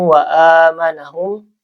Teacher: Karena ada tanwin bertemu dengan huruf idgam bigunah yaitu wau dibaca ee ditahan ya langsung diidgamkan dimasukkan ke huruf wau